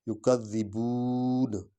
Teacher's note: بو کو تھوڑا لمبا کریں گے کیونکہ آگے واو ہے۔